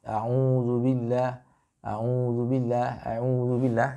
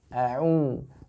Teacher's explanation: Jadi keluarnya lewat rongga. Ya, rongga mulut bukan rongga hidung.